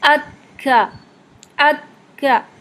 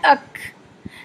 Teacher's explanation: ہمس کیسے آئے گا کہ جب آپ اس سے مخرج سے ٹکراتے ہیں اور ٹکرا کے جب یہ ہٹتی ہے زبان، تو اس میں فوراً ہی آپ کے حلق سے ایئر شامل ہو جاتی ہے۔ اکھا، اکھا، ایسے اک اک، یہ جو ہم ساکن فارم میں بھی پڑھتے ہیں نا اک، تو یہ اک اک جا کے ہا نہیں بن جاتا، یعنی کہ اگر آپ آواز اور ہوا کو ایک ساتھ ملا دیں گے تو پھر کھا کی جیسی آواز آئے گی، ہا جیسی آواز آئے گی۔